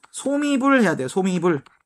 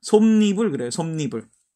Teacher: 솜은 밑에 받침이 있는 말이고요. 이불은 뒤가 이로 시작했죠. 그래서 첨가되는 게 바로 뭐다? 니은이더라. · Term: 니은 첨가